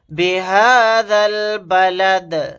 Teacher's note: آیت کرنے کی صورت میں دال کو ساکن بنا کر پڑھیں گے۔ دال ساکن ہوگا تو یہاں پر قلقلہ بھی ہوگا۔ بِهَذَا الْبَلَدِ، اس طرح سے لاسٹ میں ہم قلقلہ کریں گے۔